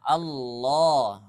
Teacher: lafzul jalalah harokatnya fathah, maka dibaca tebal ya, dibaca tebal atau dibaca tafkhim ya.